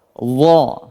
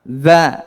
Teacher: Perbedaan antara dha dengan za adalah posisi lidah. Ketika mengucap huruf dha itu lebih ke atas daripada huruf za.